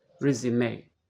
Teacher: The final E is an A sound. The stress is on the first syllable. Resume. So to help you remember if the stress should be on the first or second syllable, think about this statement.